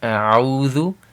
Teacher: So alif, fatha, then ayn, dhamma, wow. So that's a link, that's a madul asli, 2 haraka.